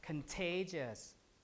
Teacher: so the t here is aspirated